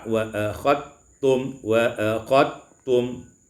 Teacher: idghamud dal fit ta, diidghamkan dal pada ta